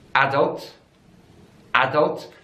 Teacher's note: different in the world so in British English is adults adults so the stress is on the first syllable